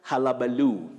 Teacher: Don't say hulabaloo. That U takes the mid-central sound halabaloo, just like Hull City.